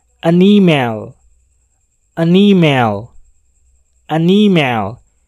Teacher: cara penggunaan artikel an pada huruf vowel yaitu dengan menyambungkan bunyi n dengan huruf vowel berikutnya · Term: bunyi huruf n bersambung